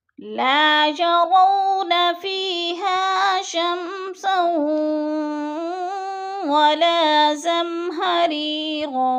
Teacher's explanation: فی پہ یا مدہ، ہا پہ الف مدہ، دونوں کو ایک الف 2 حرکات کے برابر کھینچ کر پڑھنا ہے